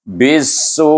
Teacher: Kita kena baca dengan 4 atau 5 harakah kerana dia bertemu dengan hamzah dalam satu kalimah, kita baca dengan mad wajib muttasil.